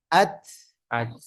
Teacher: இது ஷித்தா அதனால சப்தத்தின் ஓட்டம் தடைபட்டு காற்றின் ஓட்டம் மட்டும் இங்க இருக்கும்